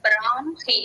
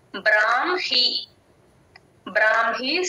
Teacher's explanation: హ కింద మ ఒత్తు వచ్చినప్పుడు ఫస్ట్ మ చెప్పి తర్వాత హ చెప్పాలి